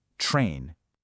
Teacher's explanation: It's a lot like the English word train, but it has a slightly more nasal sound at the end.